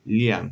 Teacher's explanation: La lengua se coloca un poco más atrás que la N, ¿sí? Es similar a la L del español, pero la lengua va un poquito más atrás en el paladar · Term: alveolar lateral